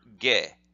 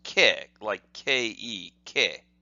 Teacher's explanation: with the two tick marks there, that's a voiced, what's called a voiced sound, and so the ke becomes ge.